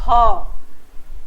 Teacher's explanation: दोनों स्वर तंत्र के बीच हवा जो है वह रगड़ खाती हुई बाहर निकलती है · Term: संघर्षी व्यंजन